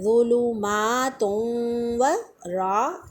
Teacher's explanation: रा मोटी पड़ जाएगी यहाँ पर ज़बर की वजह से, ऊपर इसकी हरकत हो तो मोटा पढ़ते हैं, नीचे हो तो बारीक पढ़ते हैं।